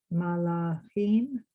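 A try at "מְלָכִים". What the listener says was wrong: not ma, me, just mem, me.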